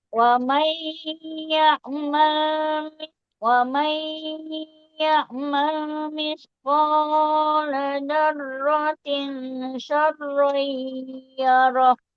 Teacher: ditahan dengungnya di nun sukun bertemu ya-nya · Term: idgham biguna